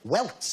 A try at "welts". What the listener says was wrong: No, welts with a T, not with a K.